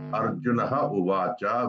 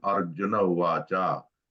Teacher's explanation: Arjunaha uvacha will become Arjuna uvacha. Visargaha is dropped. So this type of thing is called lopaha santikaryam.